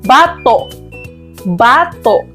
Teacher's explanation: Ngunit kung atin itong bibigkasin sa diing malumi ito ay mayroong dahandahan o impit na tunog sa dulong bahagi